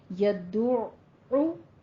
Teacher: تشدید کا معنی ہے دو عین ادا کرنے ہیں. پہلا ساکن عین، اس پر رکنا ہے، پھر دوسرا عین جس کے اوپر ضمہ ہے، پیش ہے، اس کو ادا کرنا ہے · عین کو آپ نے وسط حلق سے ادا کرنا ہے اور اس کے اوپر تشدید ہے، دو عین. تشدید کا معنی ہے دو عین ادا کرنے ہیں.